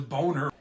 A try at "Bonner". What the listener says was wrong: It's pronounced Bonner, sir. The O is soft.